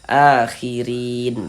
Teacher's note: Huruf ro memiliki harokat kasroh nih, baris satu miring di bawah huruf ini namanya harokat kasroh atau tanda baca kasroh. Jadi huruf ro yang memiliki harokat kasroh dibaca tipis, dibaca tarkik. Sehingga pangkal lidah kita, pangkal lisan kita itu tidak naik terangkat ke atas. Jadi santai saja posisi lidahnya, relax.